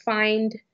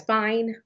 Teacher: words like find, produced as “fine” without the d and you reduce that consonant cluster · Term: consonant cluster reduction